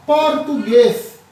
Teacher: é a palavra em que a sílaba tônica ou a sílaba mais forte é a última. Essa daqui, em português, é uma palavra oxítona, com acentuação gráfica, tá?